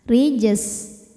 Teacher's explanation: huruf ro dibunyikan secara tarqi karena harakatnya di bawah maka ro dibaca tipis rijes kemudian jimnya Qalqalah Sugra karena Jim ini sukunnya asli dan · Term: tarqiq